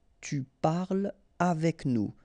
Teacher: So no liaison here between parle and avec